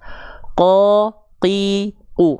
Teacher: Dilafalkan tanpa adanya aliran nafas. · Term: huruf qaf